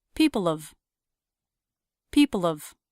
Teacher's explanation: Here's an example of a dropping the H reduction. Instead of people have, I said people of, dropping the H and reducing the a vowel to the schwa. Now have just sounds like a third unstressed syllable at the end of people.